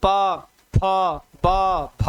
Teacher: दोनों होठ आपस में मिलते हैं। दोनों होठों की सहायता से आप बोल सकते हो। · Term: ओष्ठ वर्ण